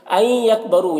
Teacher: نون کو یا کے ساتھ ملا کر غنہ کے ساتھ پڑھنا ہے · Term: ادغام ناقص